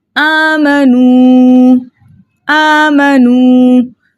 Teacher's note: वाव साकिनों से पहले किसी भी हर्फ के ऊपर पेश हो, ऐसा वाव मद्दा कहलाता है। वाव मद्दा को 2 हरकत की मिकदार खींच कर पढ़ेंगे।